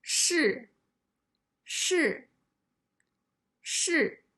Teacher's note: the first character is the fourth tone